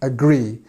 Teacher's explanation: Agree is actually a word that you need to make sure you get this stress on the second part, because if you say agree, it doesn't sound right.